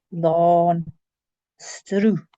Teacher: The accent lengthens the vowel, and there are words that exist with and without the accent, and they mean different things.